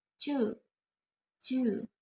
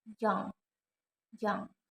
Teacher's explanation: These consonant sounds are made when the blade of the tongue, middle of tongue, touch the hard palate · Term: Palatal sounds